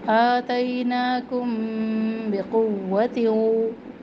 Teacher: आतैनाकुम बिक़ुव्वतिन, मीम साकिन के बाद जब बा आ जाए तो वहाँ पर हम इख्फ़ा करते हैं, जैसे नून पर इख्फ़ा करते हैं तो यहाँ पर मीम पर इख्फ़ा करेंगे और ये भी एक अलिफ के बराबर होगी। इस इख्फ़ा को इख्फ़ा शफ़वी कहा जाता है क्योंकि मीम होंठों से अदा होता है।